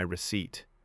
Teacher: Receipt sounds like receipt and the P is silent.